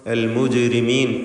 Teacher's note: ജീമിൻ്റെ സുക്കൂൻ ഖൽഖല സുഗ്റ നൽകി ശബ്ദം ചലിപ്പിച്ച് ഹറക്കത്ത് പോലെ ഉച്ചരിക്കുക